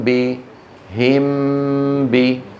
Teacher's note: نرى ايضا على اللوحه شكل الشفتين عند نطق الميم المخفاه هكذا ويكون بانطباق ما على بعضهما دون مجافاه